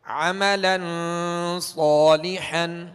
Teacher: ہم نے صاد کو تھوڑا سا کھینچا ہے ایک الف کی مقدار میں